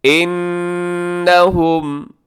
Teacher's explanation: نون مشدد پہ غنہ ہے